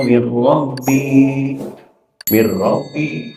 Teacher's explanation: memasukkan suara nun ke huruf idgham, yakni huruf ra, tam sempurna masuknya sehingga tidak terdengar lagi suara dengungnya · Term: idgham tam